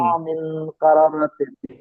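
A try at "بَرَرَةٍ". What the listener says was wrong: কারা নয়, বারা, বা যাবার বা, বাররাতিন।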